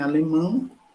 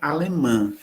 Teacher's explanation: em ão você tem um ditongo nasal, em que tem um an e o ou, que seria semivogal.